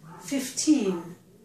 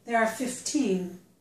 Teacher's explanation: if the number is at the end of a phrase or a sentence, it's normally stressed on the second syllable, on the teen.